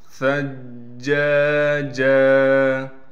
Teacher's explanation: ثا کو نرم کر کے پڑھنے کے ساتھ ثا کو جیم سے ملائیں گے، اس لیے جیم سے ملا رہے ہیں کہ جیم پر تشدید ہے۔ · جیم کے بعد الف ہونے کی وجہ سے اس کو ایک الف کی مقدار کھینچیں گے بھی، اس جیم کو بھی وقف کی حالت میں ایک الف کی مقدار کھینچیں گے، کیونکہ اس پر دو زبر ہیں۔